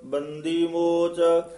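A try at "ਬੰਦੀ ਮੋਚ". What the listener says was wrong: बंदी मोच जिहड़ा पाठ है संबंधक पाठ है इनू बंदी नहीं कहना दद्दे नाल उच्चारण करना है बंदी मोच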